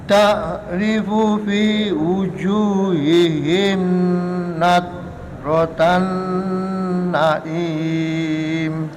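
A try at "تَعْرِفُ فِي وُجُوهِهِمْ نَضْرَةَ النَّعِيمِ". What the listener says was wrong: Himipun boten dengung, Mbak. Fi wujuhihim nawratan na'im. Himim boten pareng. Ta'rifu fi wujuhihim lentur tapi boten didengungaken, boten ditahan. Wujuhihim lah ngoten.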